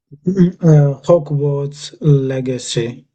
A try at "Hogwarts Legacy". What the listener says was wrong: Yeah, spot on.